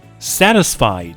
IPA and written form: ˈsætɪsfaɪd (satisfied)